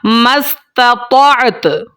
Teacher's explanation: آسان الفاظ میں اگر کہہ دوں کہ تا کی آواز آپ نے ظاہر کرنی ہے جب آپ نے اس کے اوپر وقف کرنا ہے۔ اس کو میں پڑھوں گا مستطعت۔